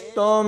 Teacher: تا کو میم کے ساتھ ملائیں گے تو یہاں پر پورا غنہ کر کے پڑھا جائے گا